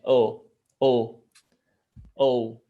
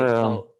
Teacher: phonetically, it's actually like two vowels together, so it's shown as a glide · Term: closed O